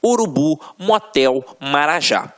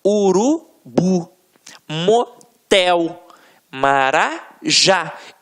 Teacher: reparem que na hora da pronúncia de forma mais aguçada você vai perceber que realmente a pronúncia da última sílaba ficará mais forte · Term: oxítonas